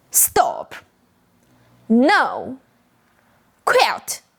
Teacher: the fourth tone starts at the same high pitch as the first tone then falls fast · Your voice starts high then drops down quickly— sharp and sudden